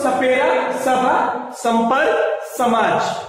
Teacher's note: स दंतव्य स दांत के पास वाला स होता है